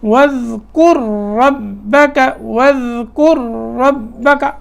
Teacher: اب را، دونوں را ایک ساتھ آ رہے ہیں، پہلا ساکن ہے دوسرا مشدد ہے، تو را کو پھر را میں ادغام کریں گے اور یہاں دو حرفوں کی دیر لگائیں گے. وَاذْكُرْ رَبَّكَ، تھوڑی سی یہاں دیر لگانی ہے تاکہ دو حرف کی ادائیگی جیسے ہوتی ہے، دو حرفوں کی ادا کرتے وقت جو وقت درکار ہوتا ہے وہ یہاں لگے گا.